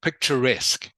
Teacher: Please remember to sound the final consonant, which is the k sound.